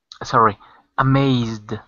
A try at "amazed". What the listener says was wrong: That's it.